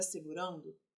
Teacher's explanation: este N de segurando, é um som nasal e não um som consonantal. Ele está ali trazendo o seu som para a letra anterior e produzindo juntos um único som. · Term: dígrafo vocálico